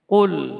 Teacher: Contoh misalnya qul, ya, dengan qaf, huruf yang keluar dari pangkal lidah, kemudian syiddah dan jahar, huruf yang memiliki syiddah, yaitu sifatnya syiddah dan jahar.